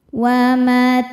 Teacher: Berikutnya ada idgham bila gunnah karena ada tanwin fathah menghadapi huruf lam. Cara bacanya tanwin dimasukkan ke lam, tidak disertai dengung, jadi cukup ditekan. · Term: idgham bila ghunah